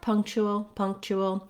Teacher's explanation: see ch is two symbols that's because it's an affricate sound i start my tongue in the position for t and i drop it down in the position for sh